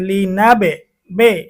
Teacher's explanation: এখানে বায়ের মধ্যে একটা প্রতিধ্বনি হইতেছে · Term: কলকলা